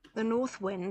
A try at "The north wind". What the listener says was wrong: The north. Yeah, maybe we do have a little bit of an off glide there. North. Try it again.